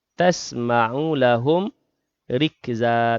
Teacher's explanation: mim mati bertemu dengan ra lahum rikza, izhar syafawi, jelas bacaan mim mati